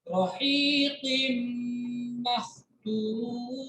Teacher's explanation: तनवीन के बाद मीम अगर होता है तो तनवीन को मीम के साथ मिक्स करते हैं और ना करके पढ़ते हैं।